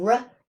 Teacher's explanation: So it's a voiced alveolar approximant of r